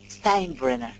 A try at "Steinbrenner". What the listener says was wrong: I know the E is first, but the I is pronounced.